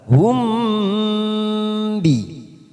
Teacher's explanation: mim sukun bertemu ba, namanya bacaan ikfa safawi, siap masuk pada huruf ba